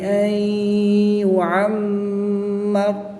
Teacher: را کے اوپر زبر ہے تو را کو پورا نہیں موٹا پڑھیں گے، جب وقف کریں گے تو را ساکن ہو جائے گی، تو را ساکن سے پہلے حرف پر زبر آئے گی تو یہاں پر بھی را کو پڑ پڑھیں گے، یعنی کہ وقف کی حالت میں بھی را کو پڑ پڑھا جائے گا اور وصلاً بھی را کو پڑ ہی پڑھا جائے گا